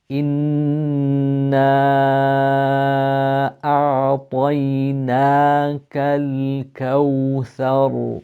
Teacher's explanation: a noon with a shadda on it, which means that we elongate the sound of the noon